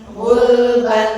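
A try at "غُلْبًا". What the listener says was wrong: Nah, lam sukun ya, jadi jangan gulban, gulban, gulban.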